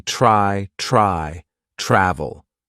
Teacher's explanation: the consonant blend TR is going to be more of the CH sound combined with r